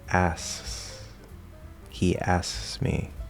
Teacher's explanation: Note also in the case of the SKS specifically, it is actually possible to completely drop the K and just re-push out the S. So instead of asks, you can say asks.